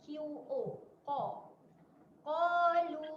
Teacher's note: Qalu. Okey, berhati-hati huruf yang pertama adalah huruf qaf, huruf yang tebal